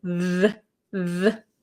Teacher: So it makes, there's two types of TH sounds, right? The TH that makes a sound, like a vocalized sound.